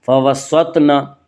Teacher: طا کو پورپی پڑھا جائے گا کیونکہ طا حروف مستعلیہ میں سے ہے